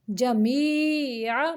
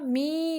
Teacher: آواز کو ناک کی طرف نہیں لے کے جانا، منہ سے نکالنا ہے